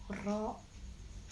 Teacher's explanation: takrir, ujung lidah bergetar. Hurufnya ada satu yaitu ro